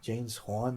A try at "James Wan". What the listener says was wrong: No, it's James Wan, but you said James Wan like he's fucking. Hispanic director or some shit. But you said Juan.